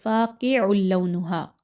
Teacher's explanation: آگے چلے تو فا الف زبر فا، الف مدہ ہے 1 سے 2 حرکت کے برابر، اس کو پڑھیے۔ قاف حروف مستعلیہ میں سے ہے، اس کو موٹا کر کے پڑھیے۔